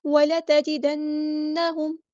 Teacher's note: جب نون اور میم پہ آتی ہے تو غنہ زمانی کرتے ہیں ہم یہاں پر، ایک الف کے برابر رکتے ہیں. لمبا کرنے میں اور رکنے میں فرق ہوتا ہے.